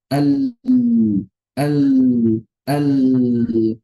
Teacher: Ujung lidah nempel suara mengalir di sisi lidah. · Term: inhiraf